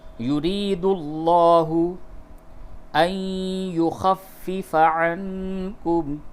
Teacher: نون ساکن کے بعد یا ہے، ادغام مع الغنہ ہوگا۔ ان یخفف عنکم، نون ساکن کے بعد کاف ہے، اس جگہ پہ اخفا کیجیے۔